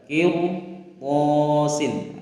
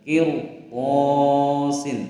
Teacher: ini dibaca tebal, tafkhim, bukan tarkik ya, karena ra sukun sebelumnya kasrah berhadapan dengan huruf isti'la. Tadi sudah disebutkan bahwa to ini adalah salah satu daripada huruf isti'la, maka dibaca tebal.